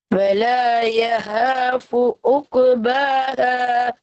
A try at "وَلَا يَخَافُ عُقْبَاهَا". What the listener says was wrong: யஹாபு என்கிறது பிழை. படிச்சிட்டீங்க, போன கிளாஸ் சொல்லி தந்தேன். அப்படி ஓத முடியாது, அது பிழை. பிழை. யஹாபுங்கிறது பிழை.